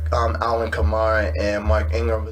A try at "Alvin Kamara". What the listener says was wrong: Alvin Kamara, not Allen. It sounded like you said Allen.